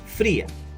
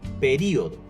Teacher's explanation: ejemplo que también pertenece al hiato hacen twal pero esta vez formado por una vocal cerrada acentuada y una vocal abierta fría el hiato está formado por las sílabas pri a la